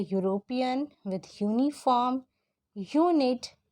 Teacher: the sound which is coming from them is a consonant sound, which is your y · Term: y sound